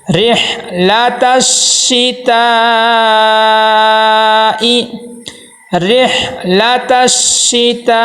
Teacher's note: دیکھیں یہاں پہ جس میں حروف مدہ ہے اسی میں حمزہ ہو، دیکھیں الف مدہ ہے اس کے ساتھ حمزہ آیا ہوا ہے تو یہاں اس کو 2 سے 3 الف کے برابر لمبا کریں گے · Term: مد متصل